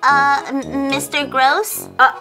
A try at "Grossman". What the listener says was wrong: No, that's not my name. Let me fix this. My name is not Gross. It's Grossman.